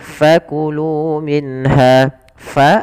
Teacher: fa alirkan nafasnya, fa, jangan dibaca pa